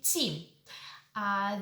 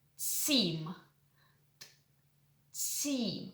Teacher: The sound is palatalized and it sounds more like aspirated T in English and more palatalized.